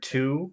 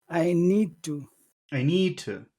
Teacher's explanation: if you say the word to when it's alone it's long to but but in this phrase it's very short